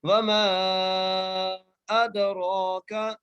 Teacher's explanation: دال پہ قلقلہ کرتے ہوئے را کو ایک الف کی مقدار کھینچ کے اور را کو موٹا کر کے پڑھنا ہے · مقدار کھینچ کے اور را کو موٹا کر کے پڑھنا ہے، کاف کے اوپر زبر ہے، بغیر کھینچے پڑھنا ہے، یہاں پر قاف اور کاف میں فرق رکھنا ہے، یہ باریک کاف ہے